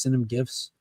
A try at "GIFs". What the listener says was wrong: No T.